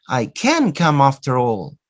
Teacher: the stress is not in the verb come. The stress is in the word can, because you are emphasizing. So it means that you are making this word prominent.